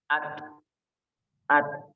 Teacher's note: Jadi untuk pembacaan huruf ta sukun, maka dia itu ada sedikit mengeluarkan udara. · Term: hamas